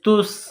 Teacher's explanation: اس کے بعد سین، سین میں سیٹی کی آواز پیدا کریں گے، سین کو پتلا کریں گے، سین کے اوپر جزم کا نشان ہے، تو تا کو سین کے ساتھ ملائیں گے جزم کی وجہ سے۔